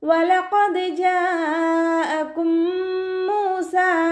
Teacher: ഖാഫ് ഇസ്തിഅലാൻ്റെ ലെറ്ററാണ്, തഫീം ചെയ്യുക.